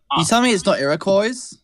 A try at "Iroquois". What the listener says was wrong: There's no S on the end. It's Iroquois.